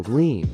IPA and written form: ɡliːm (Gleam)